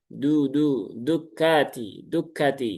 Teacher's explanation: huruf dal itu kan dia ujung lidah bertemu dengan tempat tumbuhnya gigi seri atas. Berarti ya cukup digusi saja ya.